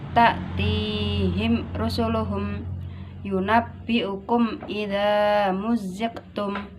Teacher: Mem sukun bertemu selain ba dan mem dinamakan izhar syafawi. Tidak boleh dibaca dengung.